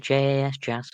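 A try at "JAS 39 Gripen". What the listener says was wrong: Yas, because I think it's like Swedish, but it's like Yas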